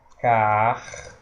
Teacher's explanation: Porque vogal vai ser o e o i vai ser a semivogal, porque a gente insiste em dizer carteira. Nós não pronunciamos o i, porque é uma semivogal, é uma vogal mais fraca.